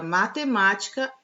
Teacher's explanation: a antepenúltima sílaba da palavra matemática é a sílaba tônica e as demais são átonas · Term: proparoxítona